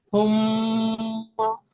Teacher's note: মিমের উপরে তাজদিদ এসেছে, মিম তাজদিদ গুণনা করা ওয়াজিব। মিম তাসদিদ যুক্ত হরফকে গুণনা করা ওয়াজিব। এক আলিফ পরিমাণ টান দিয়ে পড়তে হয়, একালি পরিমাণ গুণনা করে পড়তে হবে, টান হবে না।